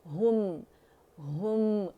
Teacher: हम तुम कुम उर्दू का नहीं इस्तेमाल करेंगे, हु की साउंड गोलाई देनी हमने